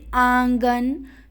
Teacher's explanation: अनुनासिक मतलब चंद्र बिंदु, जैसे आंगन, तो मुंह से भी ध्वनि निकल रही है, नाक से भी, तो इसका उच्चारण कहाँ से होता है, नाक और मुंह दोनों से होता है।